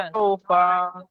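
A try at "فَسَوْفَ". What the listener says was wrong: ফাসাউফা টান হবে না, ফাসাউফা।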